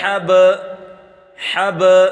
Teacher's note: اس کا پڑھنے کا طریقہ یہ ہے کہ با پر قلقلہ ہوگا